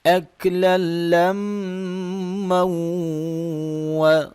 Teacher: یعنی کہ غنہ کریں گے میم کے اوپر اور آگے واو کے ساتھ ملاتے ہوئے پھر غنہ کریں گے، کیونکہ میم مشدد ہے، میم کا غنہ ہوگا